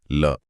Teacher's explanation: इसमें लिखा है कि हवा जीभ के बगल यानी पार्श्व से निकलती है। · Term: पार्श्विक व्यंजन